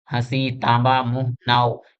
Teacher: पहला है अनुनासिक स्वर। यानी उच्चारण के समय मुख के साथ साथ नाक से भी ध्वनि निकलती है।